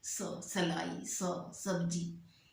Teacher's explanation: स छोटे वाले जो नीचे वाले जो दांत है ना, उसको जीभ जाके एकदम टच करती है, स बोल कर देखिए, सलाई, सब्जी, ठीक है, एकदम चिपक जाते हैं। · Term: दंत स